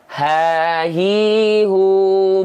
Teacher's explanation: yang muncul enggak akan nafas berbisik yang muncul adalah nafas biasa